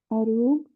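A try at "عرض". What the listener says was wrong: नहीं, वो पेश नहीं है, वो जज्म है।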